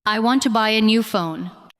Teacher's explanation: The important words are want, buy, new, and phone. The other words support them. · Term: strong words